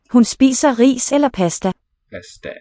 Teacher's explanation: note how the letter A vowel is affected by the following dental consonants